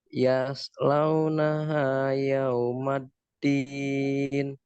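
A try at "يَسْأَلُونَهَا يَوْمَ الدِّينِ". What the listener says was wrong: Nah, masih pakai sin itu. Yas. Yaslaunaha. Yaslaunaha.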